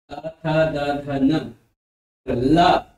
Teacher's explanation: आगे है दंत, दंत यानी वर्ग। जब जीभ दांत के पास आती है तब वे दंत ध्वनियां होती हैं।